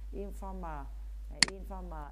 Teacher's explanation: in tiền tố không nhận trọng âm rơi chữ former